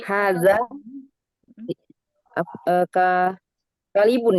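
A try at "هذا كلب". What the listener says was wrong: Alamnya sukun. Kal.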